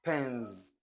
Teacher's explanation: because the last sound here is a voiced consonant. Therefore, we pronounce this S as z, z, z.